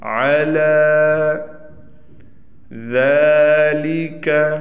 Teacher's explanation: لام پر کڑا زبر آ گیا، لہٰذا لام کو ایک الف کے برابر کھینچ کے پڑھیں گے۔